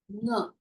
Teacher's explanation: When you are pronouncing the nga, the sound is coming from the throat, but also through the nose little. Okay, so the 5th letter of each varga will have the pronunciation from its original pronunciation place and also the nose. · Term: nasal letter